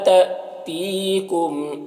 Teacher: تی میں یا مدہ ہے ایک الف کے برابر کھینچیں گے